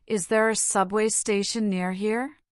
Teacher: The intonation usually rises at the end because it's a yes/ no question.